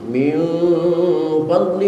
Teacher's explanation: ifanya bukan lagi ihfa ab'ad tetapi ihfa aus maka suaranya juga bukan suara ng tapi suara m